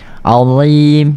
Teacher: Azim, dia tak ada desiran.